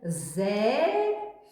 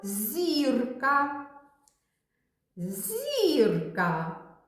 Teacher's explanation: звук з - це твердий приголосний звук а звук зь - це М'який приголосний звук